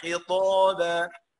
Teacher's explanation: قلت مفخم عشان قبليها حرف الطاء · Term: مفخمه